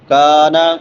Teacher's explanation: ان اللہ، نون مشدد ہے، غنہ ہوگا، لفظ اللہ پر پڑا جائے گا کیونکہ لفظ اللہ سے پہلے زبر ہے۔ کانا، کاف باریک ہے اور کاف کے بعد الف مدہ ہے، ایک الف کے برابر لمبا کریں گے